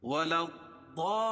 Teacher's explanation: اس لام کو جو ہے یہاں ملائیں گے ضاد میں. کیوں کہ ضاد حروف شمسی میں سے ہے.